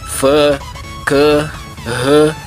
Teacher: Mas ao pronunciar sílabas como Fã, Cã, Rã, o véu simplesmente ficará abaixado e o som sairá pelo nariz.